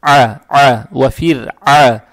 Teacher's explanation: Далее стоит буква айн с фатхой. Фатху произносим через гортань, то есть а, а, ва фир, а.